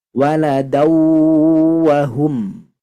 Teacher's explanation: tadi huruf nun sukum bertemu ya Ini fathahtain nah fathatain atau fathah tanwin bertemu huruf wau bertasydid hukumnya Idgham Bighunnah maka harus dengung yang lama